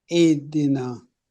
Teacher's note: the hamza stronger and then the ha has running sound.